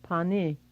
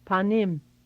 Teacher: Listen to what happens when you add an M on the end of the word after that E. This E sound changes to I.